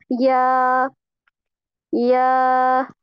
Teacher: जुबान के दरमियान को ताल्लुक की तरफ बुलंद करते हुए बारीक आवाज में पढ़ते हैं। पहले भी हमने यही पढ़ा था, जीम में भी हम जुबान के दरमियान को, जो हमारी जुबान का बीच वाला पार्ट है, उसको हम क्या करेंगे, ताल्लुक की तरफ बुलंद करते हुए बारीक आवाज में पढ़ेंगे।